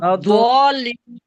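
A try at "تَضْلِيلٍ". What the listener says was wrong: تدا نہیں، دوت ساکن ہے نا. تد، لام زیر یا نہیں، لام یا زیر لی.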